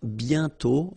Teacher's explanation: And then the final T is not pronounced. Bientôt, okay?